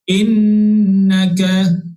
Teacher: kita kena baca dengung sebanyak 2 harakat ketika kita nak menyebut nun yang bersabdu tu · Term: wajibal gunnah